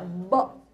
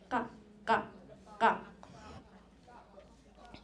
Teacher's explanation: when you're doing the ba and the ka ka ka, you're not using the air from your lung. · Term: non-pulmonic